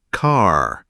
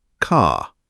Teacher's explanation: Americans pronounce R sounds at the end of words and syllables.